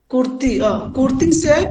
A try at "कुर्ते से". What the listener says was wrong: নো, কুর্তে কুর্তে। ইয়ার মাঝুর হইলে এ এ এই ধরনের উচ্চারণ, এই ধরনের উচ্চারণ। যেমন দেখেন, করতে সে, আমি কিন্তু সি বলি নাই, সে এ, যেমন দেখেন পারে, ঠিক আছে? তারপর কে, তার মানে কি এই ধরনের উচ্চারণ হবে।